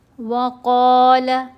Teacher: قاف کو لمبا کرنا ہے، موٹا بھی پڑھنا ہے